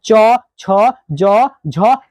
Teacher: च छ ज और ज ये चार का उच्चारण स्थान तालू हो जाएगा